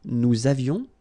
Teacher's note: little liaison, final S not pronounced